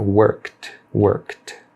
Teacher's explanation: Por exemplo, o verbo aqui, o worked, do K, você já pula para o som de T. Não pronuncia o E aqui.